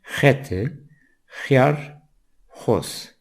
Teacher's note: Son sessiz harfimiz, 4 harfin son sesi X dediğimiz ve Zazaca'da H sesini veren, G'ye yakın, daha yumuşak bir ses kelimemiz hete, kağıt, hıyar, salatalık, hoz, domuz.